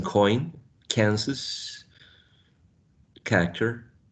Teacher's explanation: The back of the tongue is pressed against the velum or soft palate. Voiceless, good. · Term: velar